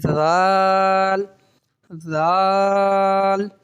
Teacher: تو ذال بغیر سیٹی کے ادا کریں گے. تو پڑھیں گے ذال ذال, کھینچ کے پڑھیں گے اسے بھی 5 الف کے برابر, اور بغیر سیٹی کے پڑھیں گے.